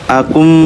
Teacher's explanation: ditutup antara bibir atas dengan bibir bawah lalu didengungkan karena ada penahanan nafas Akum nafasnya tuh dipentokkan ke bibir maka keluarlah suara dengung begini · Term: idg Mimi